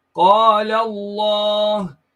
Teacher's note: So you read the lam as full mouth here. The first lam and the second lam are read as one full mouth lam.